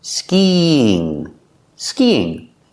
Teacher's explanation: We have to link these two vowels with the sound y.